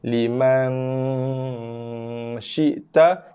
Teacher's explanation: Kemudian kita ada dengung ikhfa. Nun bertemu dengan syin.